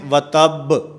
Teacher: با کے اوپر آخر میں قلقلہ ہے، اور ہونٹوں کو نرمی کے ساتھ ملانا ہے